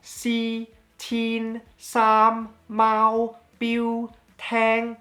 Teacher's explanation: all those are do re mi fa so, that exact same high flat tone